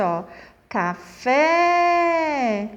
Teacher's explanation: aquela palavrinha onde a última sílaba é a mais forte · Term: oxítona